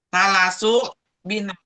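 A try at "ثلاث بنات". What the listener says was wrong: itu salah. Itu salasu banatin, bukan binatin. Salasu banatin. Banat itu adalah jamak dari bintun. Bintun anak perempuan.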